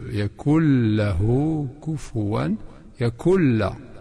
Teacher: le nun est complètement disparu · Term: idgham